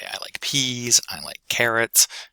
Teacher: you would keep that high pitch value uh until your list was finished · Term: final rise pattern